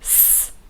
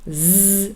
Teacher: S, no vibration, but z, very clear vibration from your vocal cords